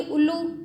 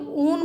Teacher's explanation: उल्लू, ये एकदम बोल देंगे, और ऊन बोलेंगे तो थोड़ा समय लगेगा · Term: दीर्घ स्वर